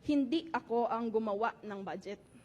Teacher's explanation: You hear the impit, the stop, after hindi, after gumawa, when usually you would not hear them.